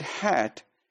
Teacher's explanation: when we produce word hat, we produce it with the tongue in a lower position